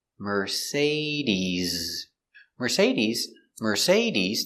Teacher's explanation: use a vibration with your z-sound